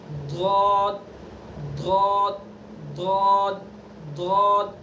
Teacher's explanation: تو جو اگلا حصہ ہے، یہ پورا حصہ، یہ کنارے نوک، اس کو ہمیں کہیں بھی ٹچ نہیں ہونے دینا ہے، احتیاط سے اس طرح سے ادا کرنا ہے کہ اس کو کہیں بھی لگنے نہیں دینا ہے. ضاد تو زبان کی بائیں کروٹ بائیں ڈاڑھ پر لگائیں